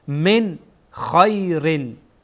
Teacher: من نون ساکن هست و بعد هم خا آمده، خا از حروف اظهار هست، بنابراین نون ساکن را در اینجا اظهار میکنیم، واضح و آشکار میکنیم